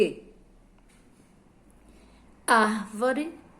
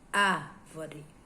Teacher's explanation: a sílaba mais forte a que você fala com mais força é a sílaba ar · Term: sílaba tônica